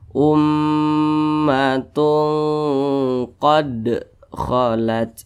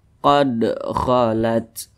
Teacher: Nah, apabila dia sukun atau karena disukunkan sebab kita berwaqaf, maka huruf-huruf tersebut itu cara bacanya itu dipantulkan. Ini ada huruf dal, kemudian dia sukun, berarti cara bacanya dipantulkan. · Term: qalqalah sugro